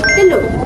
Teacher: Dalam bahasa baku, bunyi U di hujung perkataan telur menunjukkan vokal belakang bulat U.